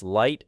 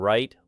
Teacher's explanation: feel the difference between touching for L and avoiding contact for R, because your mouth must first learn that these sounds are created through separate physical actions.